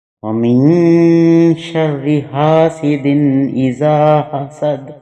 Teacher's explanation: ہا کی آواز جو ہے یہ بھی گلا گھونٹنے سے ادا ہوتی ہے، یعنی کہ سانس جو ہے یہ باہر نہیں منہ سے آتا، یہ حلق میں یہ وسط حلق سے ادا ہوتی ہے اور گلا پیچھے کی طرف دبا کے۔